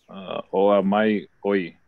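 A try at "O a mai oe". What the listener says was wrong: With the on the oa mai oi, you gotta what they call pull it. It needs to be elongated. So instead of saying oa mai oi, you gotta say oa mai oi.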